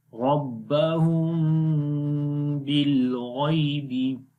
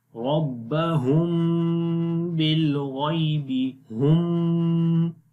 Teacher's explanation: मीम की आवाज़ को छुपाएंगे और वो किस तरीके से छुपाएंगे, होंठ तो आपस में मिलेंगे लेकिन मीम की जो आवाज़ होगी वो सख्ती के साथ नहीं आएगी बल्कि नरमी के साथ आएगी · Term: इख्फ़ाए शफ़वी